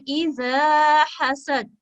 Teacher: अलिफ और उसके पीछे फतहा अलिफ मदिया, इसको हम 2 सेकंड का वक्त देते हुए अदा करेंगे।